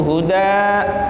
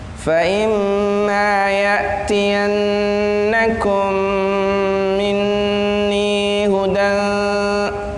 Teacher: kalau mau lanjut itu tanwinnya diwujudkan